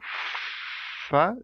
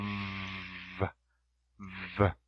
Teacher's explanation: it's a continuous, and fricative, there is a friction